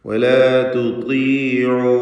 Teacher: തഫ്ഖീം ചെയ്യേണ്ട അക്ഷരമാണ് ത്വാ, പക്ഷേ കസ്റായതുകൊണ്ട് ഏറ്റവും കുറഞ്ഞ തഫ്ഖീമാണ് വരിക. വലാ തുതീഉ അംറ, അവിടെ വാവിൻ്റെ ദീർഘം മദ് മുൻഫസിൽ ജായിസാണ്.